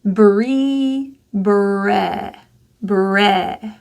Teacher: You're going to pull the middle of your tongue down. So instead of E, where your tongue is high, let it fall and relax. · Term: lower I